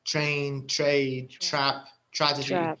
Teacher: نمط نطق متكرر دائما مع أي تي ومعها ار حيطلع الصوت هذا اللي هو زي صوت شا خفيف